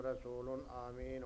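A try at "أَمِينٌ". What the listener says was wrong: آمین نہ کہے، امین، کیونکہ یہ وہ نہیں ہے نا، مطلب کھڑی زبر نہیں ہے. آمین امین نہ امین.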